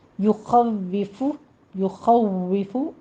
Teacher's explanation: واو پر آپ تشدید ادا کرنی ہے سختی سے، تو اس کو آپ نے فا میں نہیں بدلنا، نہ اس میں ہمس آنا چاہیے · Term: واو کی تشدید